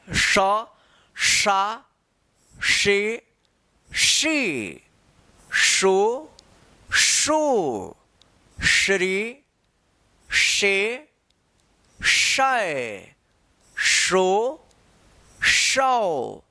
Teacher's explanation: जीभ और तालु जो है ना, जीभ तालु के पास जाता है तब जाकर उसका उच्चारण होता है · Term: तालव्य श